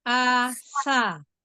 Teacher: Lagi tambahin sofirnya di huruf sin.